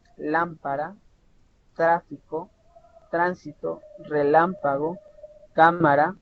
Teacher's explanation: Su sílaba tónica es la antepenúltima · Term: esdrújula